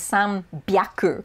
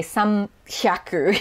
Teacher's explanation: when you're combining it with different numbers before it sometimes just for ease of pronunciation it becomes voiced